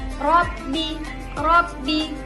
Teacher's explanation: Robbi ro yang dibaca tafkhim karena ro berharokat fathah